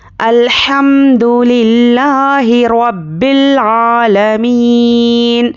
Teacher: आयत पर हम नून पर जज़म देकर सांस तोड़ेंगे, मतलब यहाँ पर हम वक्फ करेंगे, स्टॉप करेंगे।